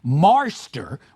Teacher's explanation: you have the intrusion of R in a word like marster, which is spelled M-A-R-S-T-E-R instead of master.